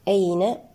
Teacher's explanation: وهو معكم أين، معكم الميم هنا ساكنة قاعد بعدها الهمزة لدينا إظهارا شفويا. أين الياء هنا ساكنة قبلها مفتوح، ياء لينة، في حالة الوصل هي حرف لين، وفي حالة الوقف مد لين، يمد حركتين أو 4 أو 6 حركات.